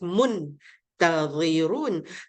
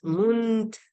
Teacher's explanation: Tapi oleh sebab dia ifak, kita macam nak sebut mun yang jelas tu, tapi di hujung tu, hujung lidah tu jangan sampai ke mahraj nun dekat langit-langit atas tu. Kita masuk ke mahraj lidah tu, masuk ke mahraj huruf sebelah nun tu, iaitu huruf ta.